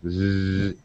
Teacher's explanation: if you hold your throat and pronounce a z sound Z you can feel the vibration so it is a voice sound